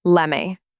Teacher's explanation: The T gets absorbed, and the two words fuse into one smooth sound, lemme. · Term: connected speech